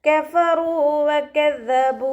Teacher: നമ്മുടെ മേലെ മുൻപല്ലിൻ്റെ അറ്റം താഴെ ചുണ്ടിൻ്റെ ഉൾവശത്ത് നനഞ്ഞ ഭാഗത്ത് വെച്ചിട്ട് ഉച്ചരിക്കുക കേട്ടോ